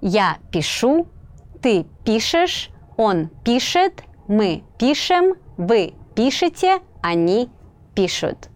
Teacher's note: the stress is on the ending in the я form, and then it shifts in the rest of the forms to the stem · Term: shifting stress